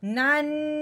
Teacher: نون مشدد تھا یعنی کہ نون کو اوپر شاد تھی، جس کی وجہ سے اب ہم نے غنہ کیا ہے